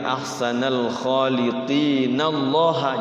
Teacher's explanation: jadi qi-nya bukan panjang 6 harokat tapi 2 harokat karena di wasol. Bagusnya itu di wasol sebenarnya ya. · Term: mad tabi'i